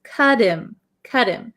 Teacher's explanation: when we link these words, this T almost sounds like a D, and this H kind of disappears